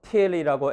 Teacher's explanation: till이라고 aspiration 있게 발음해야 되는데 till 이렇게 aspiration 없게 발음한다고 해서 다른 단어가 되지는 않습니다.